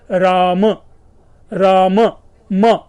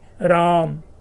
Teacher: वहां पर अंत्य स्वर के अ का लोप हो जाता है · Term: अंत्य स्वर लोप